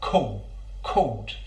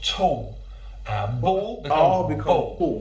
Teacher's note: Danny Dyer uses another feature that I find really interesting. He uses the vocalization of the dark L. So with the word called, we're using a dark L, but he vocalizes it so it becomes a called.